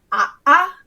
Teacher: So an okina is what is in the language world called a glottal stop, which is if you have 2 vowels next to each other and they're meant to be pronounced separately.